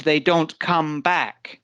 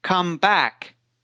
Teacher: the emphasis come back is on is on the second word so the emphasis or the stress goes on the second word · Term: word stress